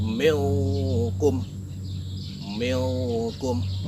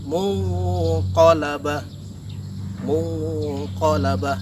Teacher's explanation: n yang terdapat pada huruf nun mati tadi disamarkan menjadi huruf ng · Huruf yang terdapat pada tingkatan abad ini ada 2, yaitu qaf dan kaf. Nah, cara membacanya adalah dengan menyamarkan huruf N itu menjadi huruf NG atau eng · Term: ikhfa Haqiqi